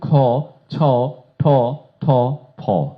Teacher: পার্থক্য শুধু একটি প্রাণ একটু বেশি বাতাস একটু বেশি। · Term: মহাপ্রাণ